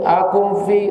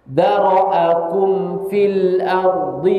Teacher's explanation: jelaskan mim sukunnya itu jelaskan jangan disembunyikan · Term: izhar